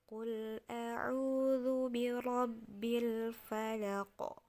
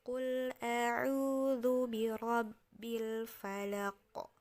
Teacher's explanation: Falaq qof juga ini seperti ke qo gitu jadi birabbil Falaq jadi kayak qof ditambah ada o tapi tidak disengaja ya jadi secara otomatis dia akan seperti mengarah ke huruf o